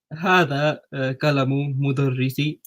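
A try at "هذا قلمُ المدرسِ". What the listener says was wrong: Yeah, are you saying qalamul with lam? Yeah, qalamul mudarrisi.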